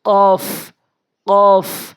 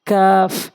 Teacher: এই কফটা হচ্ছে জিহ্বার গোড়া থেকে, আর কাফটা হচ্ছে জিহ্বার গোড়া থেকে একটু আগে বাড়াইয়া।